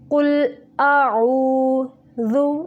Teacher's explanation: कुल अऊज़ु, दाल को नरम तरीके से पढ़ना है यानी ज़ुबान की नोक जब ऊपर वाले सामने के 2 दांतों के सिरे से लगे तो दाल अदा होता है